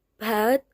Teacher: Bat dimulai bunyi beh yang bergetar.